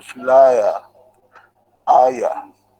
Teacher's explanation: هو عبارة عن دفثونج واجت وراه شوا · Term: ترفثونج